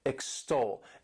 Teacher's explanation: The next verb is extol, to extol. This word has 2 syllables and the stress is on that second syllable, extol. And what it means is to praise highly, to give a lot of high praise to someone or to something.